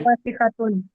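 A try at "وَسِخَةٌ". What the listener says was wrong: वसी खातून, खा पे जबर लगाएंगे, अभी तो पेश है ना, जबर लगाया, आगे गोलता लगा दिया, उसके ऊपर आपने दो पेश डाल देना, वसी खातून।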